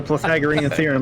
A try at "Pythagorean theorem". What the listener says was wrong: The what now? You put an L in there somewhere? The Pythagorean? I thought I heard an L in there that I didn't hear.